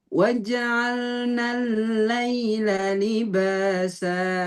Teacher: lam tasdidnya jangan terlalu panjang